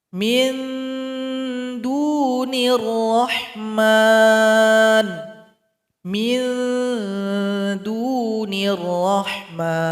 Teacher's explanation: Huruf dal tempat keluarnya ujung lidah tempelkan ke belakang gigi seri paling atas. Bunyi ikhfanya mirip dengan huruf N. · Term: ikhfa a'la